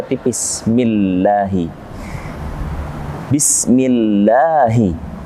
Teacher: Ini ada kalimat lamul jalalah atau Allah diawali dengan mim kasrah. Mi, maka dibaca tipis millahi. Bismillahi, dua harakat.